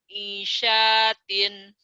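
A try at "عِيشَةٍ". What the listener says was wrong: I-nya panjang, Ibu.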